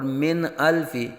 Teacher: یہاں اظہار ہوگا یعنی نون ساکن میں غنہ نہیں کریں گے